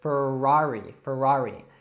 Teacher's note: in the United States, we love our R's, so we would call this Ferrari